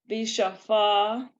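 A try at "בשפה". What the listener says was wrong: That's a sin, not a shin. So bisafa.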